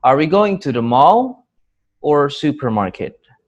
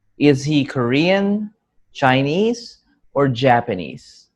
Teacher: when there are two options or more, the first intonation is rising and the last option or intonation is falling.